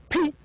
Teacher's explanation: because the air is completely stopped and then it is released